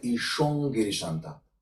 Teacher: we are actually just forming this base of the tongue, touch the palatum velum, just to be able to pronounce the velar which is following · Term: nasal velar pair